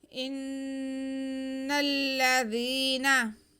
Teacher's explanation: इन्नल्लज़ीना, जी नून मुशद्दद, हमज़ा को हम नून के साथ मिलाएंगे, गुन्ना करेंगे एक अलिफ के बराबर। नून मुशद्दद मीम मुशद्दद पे हमेशा गुन्ना होता है।